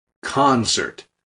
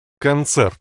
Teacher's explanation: In English, we emphasize the first syllable. Concert. But in Russian, it's Концерт.